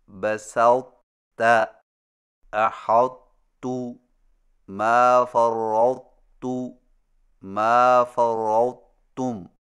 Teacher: طا کو موٹا اور بغیر جھٹکا کے تا میں داخل کر کے اس طرح پڑھیں کہ طا کے موٹا پن کو ظاہر کرنے کے فوراً بعد تا بریک ادا کریں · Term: ادغام ناقص